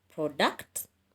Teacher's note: product you will emphasize on Pro